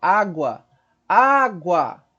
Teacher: Onde eu tenho o U como semivogal e o A como vogal forte. Então, eu tenho ditongo. · Água, eu quero água, água, o A, né? O A, observa como se sustenta o A. O U fica só para emendar, né? Água, o A. · eu estou crescendo da vogal fraca para vogal forte